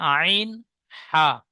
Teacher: হালাক বা কণ্ঠনালীর মাঝখান হতে উচ্চারিত হয়